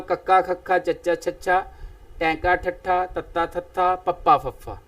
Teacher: ਇਸੇ ਤਰ੍ਹਾਂ ਨਾਲ ਉਚਾਰਨ ਦੇ ਸਮੇਂ ਸੁਤੰਤਰਤਾ ਰੂਪ ਦੇ ਵਿੱਚ ਹਵਾ ਜਿਹੜੀ ਹੈ ਬਿਨਾਂ ਕਿਸੇ ਰੁਕਾਵਟ ਤੋਂ ਜਦੋਂ ਮੂੰਹ ਵਿੱਚੋਂ ਬਾਹਰ ਨਿਕਲਦੀ ਹੈ ਤੇ ਕੰਬਣੀ ਪੈਦਾ ਨਹੀਂ ਹੁੰਦੀ, ਕੰਪਨ ਜਿਹੜਾ ਹੈ ਗਲੇ ਦੇ ਵਿੱਚ ਨਾਦ ਤੰਤੀਆਂ ਦੇ ਵਿੱਚ ਪੈਦਾ ਨਹੀਂ ਹੁੰਦਾ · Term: ਆਘੋਸ਼ ਡਕਵੇਂ ਵਿਅੰਜਨ